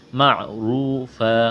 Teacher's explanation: را کو موٹا کرنا ہے، را کے اوپر پیش ہے. واو مدہ ہے یعنی واو ساکن سے پہلے پیش ہے، ایک الف کے برابر کھینچنا ہے.